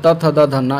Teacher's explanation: ये ता वर्ग आता है, त थ द धन्ना, ये दंत व्यंजन हो गया, जैसे दांत से निकलना